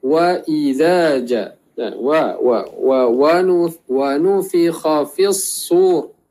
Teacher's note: Contohnya waw, dia keluar daripada 2 bibir. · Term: waw yang berbaris